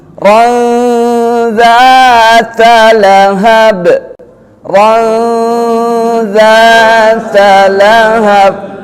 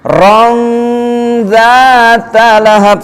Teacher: tanwin bertemu dengan dza ya itu mulut kita langsung membentuk huruf dza ya masuk ke huruf dza ron.